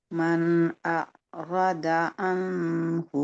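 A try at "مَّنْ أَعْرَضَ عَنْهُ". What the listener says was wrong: Dotnya tebalin. Dotnya tebalin lagi. Man a'rada. Do.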